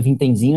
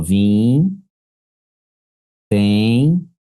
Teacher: se na original tinha o ditongo nasal, decrescente, na derivada mantém